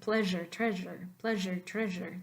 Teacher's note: Now the Z with the hat is a fricative, but it's voiced. So you want to say Z.